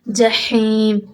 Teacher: یہ ہا اور عین درمیان حلق سے آپ نکالیں گے